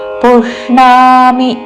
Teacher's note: పుష్ ముర్ధన్య ష కి రాణిలో పలికే ణ వత్తు